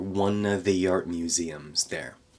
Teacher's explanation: don't forget to take the v out of the word of there. One of the art museums there.